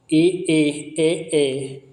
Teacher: जिन स्वरों के उच्चारण में जीवा का अग्रभाग सक्रिय रहता है उन्हें अग्र स्वर कहते हैं